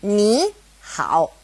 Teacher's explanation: first one becomes a second tone like this